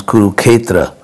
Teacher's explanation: they eliminated the s so it becomes kuruketra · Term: simplifying consonant clusters